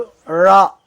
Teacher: நாவின் நுனி மேல் அன்னத்தின் நடுப்பகுதியை வருவதால் ழ என்ற எழுத்து பிறக்கிறது